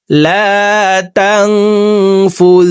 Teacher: লা এখানে একালিপ টান, জবরের বাম পাশে খালি আলিফ মদার হরফ, ডান দিকের হরকতকে একালিপ টানিয়া পড়িতে হয়। তো এই জবরওয়ালা লামটি খালি আলিফের সাথে একালিপ টানেই পড়ব